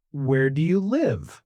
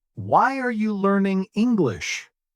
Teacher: It's a little strange, you know, because it's a question, but the music still goes down. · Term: falling intonation